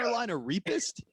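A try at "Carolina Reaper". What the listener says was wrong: It's reap. It's not rape.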